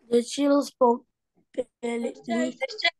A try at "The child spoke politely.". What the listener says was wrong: Politely. Ini bukan chill, child, child.